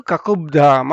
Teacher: ಕಕುಪ್ ಧಾಮ ಅಂತಿದ್ದು ಪ ಬದಲು ಬಾ ಬಂದು ಕೂತ್ಕೊಳ್ಳುತ್ತೆ. ಒಟ್ಟಿಗೆ ಹೇಳುವಾಗ ಸಂಯೋಜನೆ ಆದಾಗ, ಎರಡು ಶಬ್ದಗಳ ಸಂಯೋಜನೆ ಆದಾಗ ಅದು ಕಕುಬ್ಧಾಮ ಅಂತ ಆಗುತ್ತೆ.